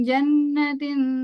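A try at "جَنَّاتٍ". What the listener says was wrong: Panjang Bu, jannatin panjang.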